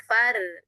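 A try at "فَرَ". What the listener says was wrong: Ini enggak naik pangkal lidahnya.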